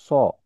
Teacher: সদ জবর উচ্চারণ হবে স, একটু মোটা করে